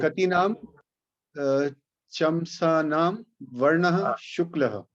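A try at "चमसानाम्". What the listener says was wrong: Atra halanta nasti. No, chamasanam. Not chamsanam. If there is a halanta, then you will say chamsanam. Parantu halanta nasti. Hindi bhashayam chamsanam probably is correct. Samskrite tu halanta nasti chet sampurnam vaktavya. You have to say the full matra.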